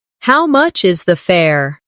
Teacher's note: The stress is on how much and fare. This makes it clear and easy to understand.